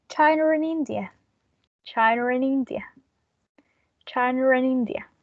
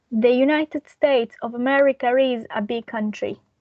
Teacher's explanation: we add an R to link those sounds with the following vowel sound in order to add the intrusive R. So when that's followed by a vowel, we add the intrusive R.